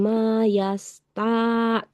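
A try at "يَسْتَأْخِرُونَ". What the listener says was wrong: Nggak panjang juga taknya itu. Yastakhirun, langsung. Yastakhirun.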